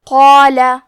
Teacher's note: کلمت قال میں قاف ہے اور اس کے بعد مد الف ہے تو ہم یہ دونوں حرف کو بھاری آواز میں پڑھیں گے